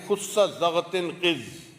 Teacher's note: بعض ہوتے ہیں حروف استعلاء، ان حروف کو ادا کرتے وقت زبان کی جڑ تالو سے لگ جاتی ہے